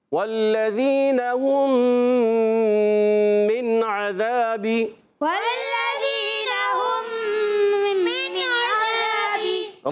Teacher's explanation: نون ساکن میں عین آ رہا ہے، اظہار ہلکی کا قاعدہ ہوگا، اظہار کریں گے. اور عذابی میں عین پر زبر، ذال زبر ذا، یہ ہے علی مدہ، مگر عین پر زبر ہے، با کے نیچے زیر ہے، حرکات کو نہیں کھینچنا.